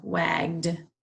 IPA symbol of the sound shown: d